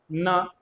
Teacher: ये जीभ आपके ऊपर के दांतों के अंदर जो मसूड़ा है ना उसको टच कर रही है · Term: वत्स्य व्यंजन